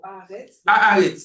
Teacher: comme le Aleph ne prend pas de dagesh, la voyelle de l'article s'allonge.